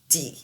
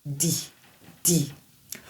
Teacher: Mais en anglais, la lettre D est plutôt à l'arrière des dents supérieures.